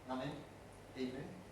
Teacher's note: So one of the things about Estuary English is probably going to be a tendency sometimes to use the alveolar rather than the velar nasal in words like this. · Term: alveolar nasal